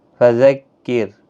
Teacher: रा साकिन से पहले ज़ेर है इसलिए बारीक पढ़ा जाएगा।